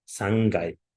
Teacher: Bu k harfi, ya'ni jarangsiz undoshning jarangli undoshga o'tkazishi undan oldin kelayotgan burun tovushi sababli jarangli undoshga aylanib ketadi.